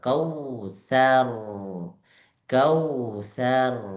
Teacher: dalam posisi sukun dan diawali harakat fathah pula maka r-nya menjadi tebal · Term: ro tafkhim